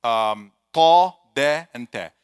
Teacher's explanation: So it's touching the tip of the tongue, touching the back of ثنايا عليا, of the top teeth with the gum.